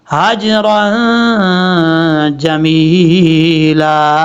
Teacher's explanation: ہا کے بعد جو جیم ہے اس میں کلکلہ ہے ، ہا بھاری سن کے ساتھ پڑھا جائے گا، اس ہا